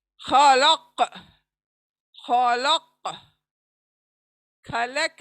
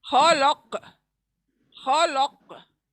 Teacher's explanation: ख को पुर पढ़ना है, ल पतला पढ़ना है, काफ कलकला पढ़ना है